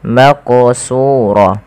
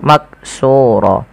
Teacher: huruf qaf ini wajib dipantulkan ketika dia berharakat sukun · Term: qalqalah